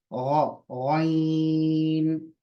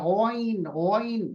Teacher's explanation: हलक के ऊपर के हिस्से से, जहां हलक शुरू होता है वहां से। गार्गलिंग साउंड, गरारा करने की आवाज।